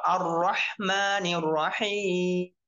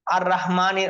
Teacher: এখানের মধ্যে উভয় জায়গার মধ্যে হার উচ্চারণ খেয়াল করতে হবে এবং র মোটা হবে আর মুখ ভরে যাবে যখন মোটা করতে হবে তখন মুখ ভরে যাবে